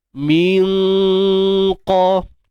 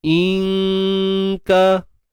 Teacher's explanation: huruf qaf dia belakang lagi, dia hampir dengan anak tekak, dan kaf depan sikit. Tapi dia masih lagi pada area pangkal lidah.